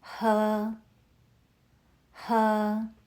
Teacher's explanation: uses the first tone. Keep your voice high and steady like you're holding a note.